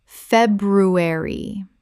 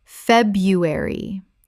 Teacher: The first R is silent in natural spoken English.